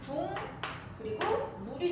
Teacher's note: 비음이 만나면서 서로 이응이 되면서 비음화가 됐다 그 얘기예요